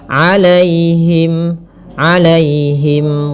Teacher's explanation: Kemudian pada lafal 'alaihim, di sini ada ya sukun yang didahului dengan fathah. Ini kita namakan dengan bacaan lin. Maka lembut dalam pelafalannya.